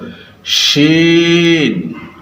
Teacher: দাঁতের ফাঁকা জায়গাগুলো দিয়ে আমরা মুখের বাতাস বের করে দিব এবং মোটা করে বলবো